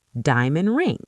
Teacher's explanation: We drop the d. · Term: dropped sounds